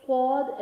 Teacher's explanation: Swad standing fatha, so make it long for 1 second